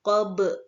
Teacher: Dibaca qob dengan huruf ba disukun dan dimantulkan maka dinamakan qalqalah kubra